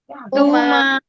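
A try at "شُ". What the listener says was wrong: Saya mendengar ada yang pakai sin tadi. Jadi kayak si. Nah, itu nanggung tuh. Nah, tafasya nanggung. Harus ketara dia. Penyebaran udara. Tarikan awalnya itu nggak perlu dari monyong. Ya, jadi langsung senyum. Jadi nggak harus nggak, tapi langsung senyum bisa.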